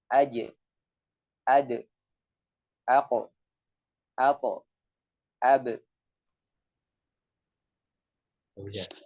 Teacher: seakan-akan ada suara mantul setelah huruf tersebut sukun. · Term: qalqalah